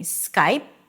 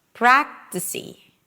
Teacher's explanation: instead of saying Skype, you may hear people saying Skypey. It's a very tiny e sound.